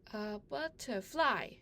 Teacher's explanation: fly is being stressed in the recording. So I will indicate fly as a stress syllable.